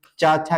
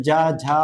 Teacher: चा और छा क्या हो जाएंगे अघोष हो जाएंगे, फिर जा झा और क्या हो जाएगा यहाँ जो है आपके सघोष हो जाएंगे।